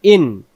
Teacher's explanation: গলা চাপে হামজার বেলা হামজা অক্ষর হলকের প্রথম থেকে শক্ত ধরে